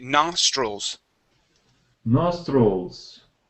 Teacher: so the i l okay we pronounce that more like a UL stroll okay nostrils nostrils good one